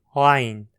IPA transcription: ʕajn